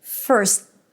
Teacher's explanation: Then we have the S first. And then you abruptly stop the S with a T. · Basically a T after an S is just an abrupt stop of the S consonant sound.